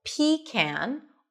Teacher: You can either pronounce it as PEE-kan, where the stress is on the first syllable